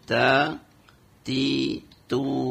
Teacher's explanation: ujung lidah bertemu dengan pangkal gigi seri atas, ya. Ketemu dengan pangkal gigi seri atas.